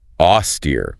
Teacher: Stress on the second syllable with a long E sound.